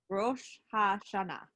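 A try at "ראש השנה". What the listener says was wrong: Yeah, and you can say it faster, Rosh Hashanah.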